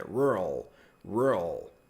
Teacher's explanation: Só que eu percebo que eles acabam separando, falam mais e depois rural. Só que aí você prolonga um pouco o R